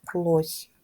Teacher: у слові лось останній звук с м'який приголосний